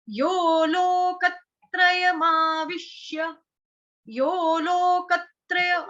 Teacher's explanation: यहाँ पे यो थोड़ा दीर्घ करके बोलना है, क्योंकि ओ की मात्रा है